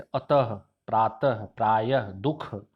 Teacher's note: विसर्ग में इसका उच्चारण ह से होता है